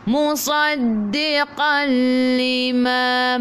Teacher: Tanwin bertemu dengan lam terus masuk ke dalam lam tanpa dengung. Sebab tu nama dia idgham masuk bila dengan tidak gunnah dengung. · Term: idgham bila gunnah